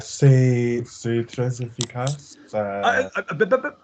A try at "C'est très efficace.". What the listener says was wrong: That was in English. C'est très efficace.